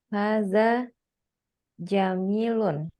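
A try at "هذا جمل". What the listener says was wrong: Jamil apa Jamal mana yang betul? Nah, kalau Jamalun itu nggak ada ya-nya. Kalau setelah mim ada ya, dibacanya Jamil gitu.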